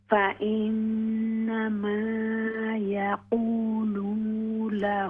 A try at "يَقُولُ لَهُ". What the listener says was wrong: देखिए लाम पर सिर्फ पेश है, यकूलू नहीं है, लाम पेश लू। فإنما يقول له